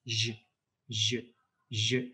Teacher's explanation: Язык остается в нижней позиции, а корень языка идет кверху.